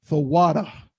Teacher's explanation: It's thawada with that breath at the end. · it should go thawata the water there's a breathy end to it